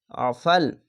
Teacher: আইনটিকে মোটা করে গলা চিপে পড়বেন